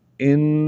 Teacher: نون مشدد ہے غنہ ہوگا